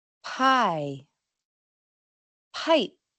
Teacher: Sin la liberación de aire, la P final no suena claramente, pero se suele entender por el contexto.